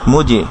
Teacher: জিম সাকিন কি হবে কলকলা হবে, অর্থাৎ সাউন্ডটা আবার ফিরে আসবে, রিভার্ব হবে